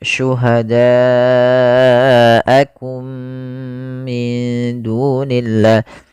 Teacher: Bila hamzahnya dalam satu kata maka dinamakan dengan mad wajib muttasil. Maka cara membacanya panjangkan empat harakat.